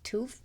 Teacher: that TH sound at the end in AAE is systematically replaced with the F